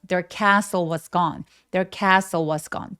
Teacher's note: there 중요한 키워드가 아니기 때문에 약간 힘을 빼서 there요 정도로 빠르게 소리 내 주시면 돼요